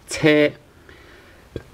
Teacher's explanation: But instead of CH sound, it's actually TS.